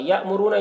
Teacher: حمزہ ساکینہ ہے، کوئی جھٹکا لگا کر پڑھیں گے. را کو پر پڑھیں گے، را کو اوپر پیش ہے.